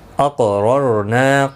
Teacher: قاف مستعلیہ ہے، پر پڑھا جائے گا، را زبر کی وجہ سے پر پڑھا جائے گا، را ساکن سے پہلے زبر ہے، یہ والا را بھی پر پڑھا جائے گا۔